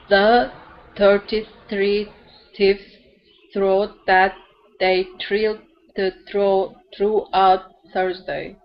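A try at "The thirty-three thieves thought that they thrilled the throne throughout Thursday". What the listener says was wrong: So the sounds that you got really good were the longer sounds, like Thursday, throughout, 33. Those ones were good. But when you get to, let's say, one syllable words, I notice that you turn it more into a T, like teves, taught.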